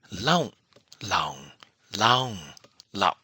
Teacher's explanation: laung, short vowel, laung, long vowel, laung, high tone, and lau, glottal stop